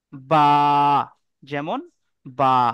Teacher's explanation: তো বা এক আলিফ পরিমাণ টান দিয়ে পড়তে হবে।